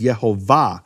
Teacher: The emphasis of the word is in the final syllable. It's marked that way in all Hebrew manuscripts with vowels.